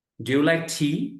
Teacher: টি তে গিয়ে টোনটা হাই হবে